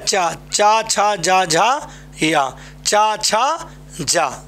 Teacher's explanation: जा का उच्चारण स्थान तालू है